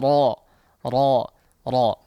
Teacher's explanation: pangkal lidah yang terangkat ke atas, sehingga suara yang keluar itu melewati langit-langit mulut terlebih dahulu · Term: dibaca tebal